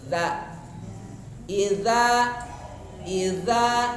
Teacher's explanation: ditempelkan ujung lidah tempelkan ke ujung gigi yang atas